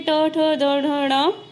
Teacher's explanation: यानी कि जिन वर्णों का स्थान तालु के पीछे वाले भाग से होता है उन्हें मूर्धा कहा जाता है